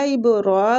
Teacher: را کو کھینچیں گے اور پور بھی پڑھیں گے